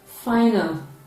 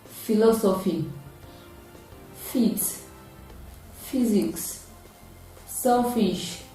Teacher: So it is a voiceless labiodental fricative sound, because the air is gradually released in its production. It can be realized at the initial, middle, and final positions of English words, and the spellings include GH, PH, F, and double F.